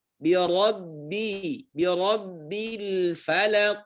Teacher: birabbi ra-nya tebal, bi tipis